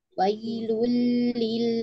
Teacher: ada tanwin bertemu dengan lam, ya akan dibaca dengan idgham bila ghunnah